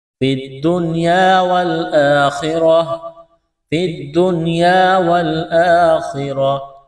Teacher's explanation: یہاں پر وقف کریں گے تو گول دا کو ہا سے تبدیل کرنا ہے